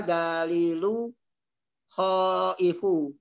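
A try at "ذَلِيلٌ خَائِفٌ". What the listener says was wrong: zalilun khaifun tanwin kan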